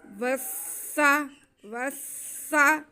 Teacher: वाव को हम सीन के साथ मिलाएंगे क्योंकि सीन पे भी शद है। वस्सा वस्सा।